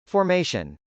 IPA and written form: fɔːrmˈeɪʃən (formation)